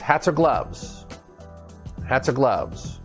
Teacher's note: so it's a consonant connected to a vowel and we tie everything together that's linking